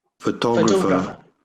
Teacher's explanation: let's make the first syllable silent almost almost inaudible